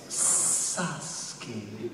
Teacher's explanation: she wanted all the S's to be very sibilant and serpentine sounding.